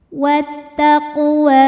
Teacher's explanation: pantulan yang kecil wattaqwa ini hukumnya adalah Mad Thobi'i muqadar karena huruf wau berbaris fathah panjang cara bacanya panjang dua harakat